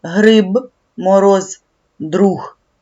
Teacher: а от у кінці слова дзвінкі приголосні вимовляють чітко